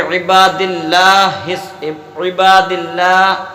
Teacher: اللہ کے نام کو ہمیں یہاں پر باریک پڑھنا ہے